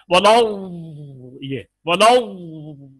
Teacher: एक हवा सी खारिज होती है जिसमें आवाज भी होती है, और वो वही इम्तिदाद है।